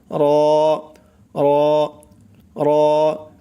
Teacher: জিহ্বার আগার পিঠ তার বরাবর উপরের তালুর সঙ্গে লাগাইয়া উচ্চারণ হয় র, মোটা করে র